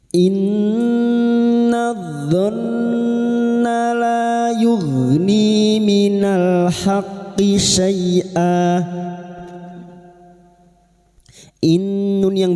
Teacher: bertasdid gunna musyadadah kita dengungkan selama tiga harakat